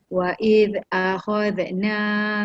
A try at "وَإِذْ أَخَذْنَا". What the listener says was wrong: dekat zal tu dia jangan bunyikan z. Wa id akhadna, dia tak ada z. Akhad ada akhad. Z tu tak mau. Akhadna. Bila termasuk lidah tu ke dalam dia jadi z. Akhadna terus masuk na. Akhadna.